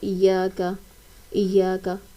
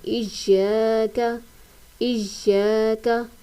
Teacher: हमने या को खींच कर पढ़ना है · یہاں پر ہم نے اس طرح نہیں پڑھنا ایاک، ایاک، بلکہ ہم نے یا کو کھینچ کر پڑھنا ہے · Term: الف مدہ